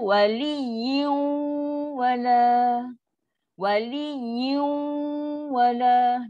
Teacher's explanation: Dan dengung dia dengung yang lama. Dengung paling sempurna. · Bunyi dengung 50%, bunyi waw tu 50%.